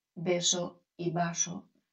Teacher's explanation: Daos cuenta que tanto la B como la V suenan igual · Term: el fonema de la B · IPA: /beso/ /baso/